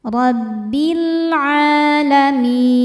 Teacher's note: Saat berhenti hukumnya adalah mad arid lukun. Karena mad thobi'i bertemu dengan huruf yang disukunkan karena waqaf. Mad thobiinya ya sukun sebelumnya kasrah.